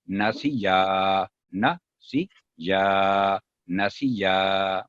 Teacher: جو سین کے نیچے کسرہ سنگل ساؤنڈ ہے، نہ سی 1 سیکنڈ سی، اور یا آگے الف ہے مدہ اور 2 سیکنڈ